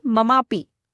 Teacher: मम शब्द के अंत में अ स्वर आ रहा है और अपि के प्रारंभ में अ का स्वर आ रहा है। तो दोनों आपस में मिलकर आ बनते हैं। जिसे हम लिखेंगे ममापी। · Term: दीर्घ संधि